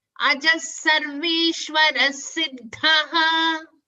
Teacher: everywhere after Visarga is a sa only. So it is easy for us. We just have to stress on the next sa.